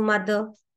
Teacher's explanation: So when two vowels are there, in between two vowels, it gives the voiced the sound